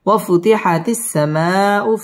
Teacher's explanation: ঠোঁট গোল করে উচ্চারণ করতে হবে ওয়াফুতিহাতিস সিন তাসদীদ ওয়ালা হরফ সামাউ মধ্যে মুত্তাসিল চার আলিফ টান দিয়ে পড়তে হবে